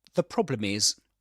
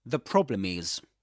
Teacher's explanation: The definite article is pronounced as the, with a schwa.